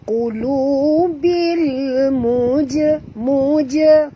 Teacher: bunyi jim di sini qalqalah, kena lantunkan dia, qulu bil muja, muja, bukan mujrimin, bukan bunyi mujrimin tapi muja, mujrimin.